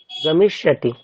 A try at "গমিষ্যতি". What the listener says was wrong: গমিষ্যা। শ্বাতি না, শ্যতি শ্যা শ্যা শ্যা শ্যা।